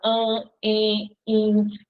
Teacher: As vogais no meio da palavra, diante de M e de N, vão ficar com o som nasal.